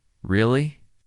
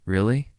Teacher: when they are surprised, their voice goes up. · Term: intonation